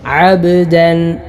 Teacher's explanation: ബായിൽ ഖൽഖല കൊടുത്തുകൊണ്ട് അബ്ദൻ ഇങ്ങനെയാണ് ഓതേണ്ടത്